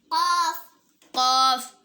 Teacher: زبان کی جڑ اوپر کے تالو سے لگے گی تو قاف ادا ہوگا